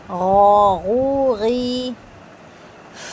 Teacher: جو غرارے کرتے ہوئے ساؤنڈ آتے ہیں نا, وہ والا ساؤنڈ آنا چاہیے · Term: غرغراہٹ